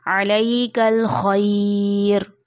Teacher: خا کی ادائیگی میں شروع میں خراٹا آتا ہے